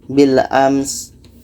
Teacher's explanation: Sin ini mesti terdengar hamasnya, anginnya.